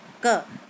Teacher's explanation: जैसे हमने क बोला, क, तो हमारे तालू का जो पीछे वाला हिस्सा है वो जीभ के लास्ट वाले हिस्से से टच हुआ